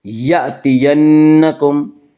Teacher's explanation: فإما یأتینکم، یہ ہم اسے جھٹکے سے پڑھیں گے، یأتینکم، نون مشدد غنہ ہوگا، غنہ کی مقدار 1 الف ہے